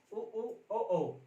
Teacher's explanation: जहाँ हमारा होंठ गोल हो रहा है वहां वृत्ताकार का रूप ले रहा है